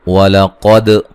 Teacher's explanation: قاف کو موٹا ادا کریں گے، دال پہ قلقلہ کریں گے